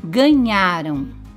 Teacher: Na palavra ganharam, nós percebemos que o nhá é a sílaba mais forte. · Em ganharão, a mais forte é rão